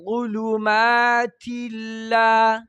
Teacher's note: ظا غټو حروفونه او لام د باریکونه